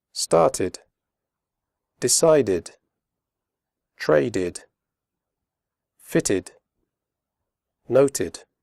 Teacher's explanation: After d and t, the final ed is pronounced id, as in did.